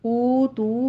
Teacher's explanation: کو نرمی سے پڑھتے ہوئے آگے یا مدہ ادا کریں گے، او تو میں دونوں ہونٹوں کو گول کر لیجئے، ٹو کاؤنٹ کرنا ہے، واو مدہ ہے